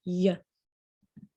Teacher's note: Palatal consonants are consonants that are articulated with the body of the tongue raised against the hard palate, which is the middle part of the roof of your mouth.